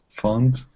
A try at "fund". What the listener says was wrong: not found, but fund.